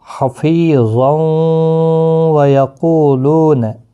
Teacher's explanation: اور ملانے کی صورت میں یہاں پر تنوین کے بعد یرملون کا واو آئے، ادغام مع الغنہ ہوگا، واو کے اوپر تشدید لگے گی، یعنی غنہ کے ساتھ پڑھنا ہے۔ حفیظا ویقولون، اس طرح سے پڑھنا ہے، اور وقف کی صورت میں ایک الف کی مقدار کے برابر کھینچ کر پڑھیں گے، ضا مستعلیہ بھی ہے، پر پڑھا جائے گا، الف بھی پر پڑھا جائے گا اس کے ساتھ۔